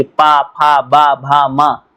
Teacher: होठ जो आपके हैं वो बार बार आपस में क्या करेंगे, टच करेंगे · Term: होस्ट व्यंजन